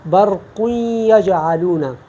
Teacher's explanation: اور ایک مثال میں تنوین کی بھی دیتا ہوں، برق یجعلون، اب دیکھیں نا برقن، یہ نون تنوین ہے اور اس کے بعد یا ہے، تو یہاں ہم ادغام بالغنہ کریں گے کیونکہ یہ ینمو میں ہے، تو برق یجعلون، یہ ایک مثال میں نے تنوین کی دی ہے، آپ مزید مثالیں آپ دیکھ سکتے ہیں۔